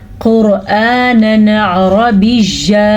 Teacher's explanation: तनवीन को जाहिर कर दिया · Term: इजहार